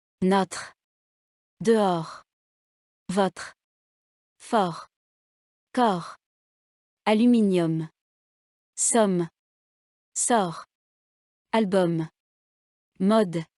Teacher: Les mots qui suivent contiennent le son O, ouvert. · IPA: [ɔ]